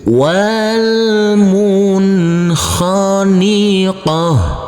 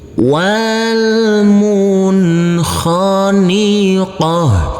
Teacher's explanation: huruf nun harus kita baca dengan terang atau jelas karena bertemu dengan huruf kha, maka di sini adalah bacaan idhar